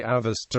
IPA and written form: əˈvɛstə (Avesta)